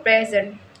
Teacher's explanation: In the word present as a verb, meaning to show or give, the stress is on the second syllable